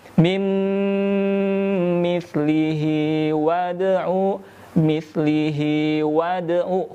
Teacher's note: huruf dal bertanda sukun. Ini qalqalah sughra, mengalir dan memantul. Jadi yang memantul itu adalah suara bukan nafas ya.